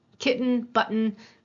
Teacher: we have what's called a glottal stop. So that way back at the glottis, there's a little stop there. But again, we hear that as a ch.